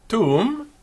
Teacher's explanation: When we have tuum, actually ends in a vowel, not a consonant. It doesn't end in an M. It ends in this nasalized U.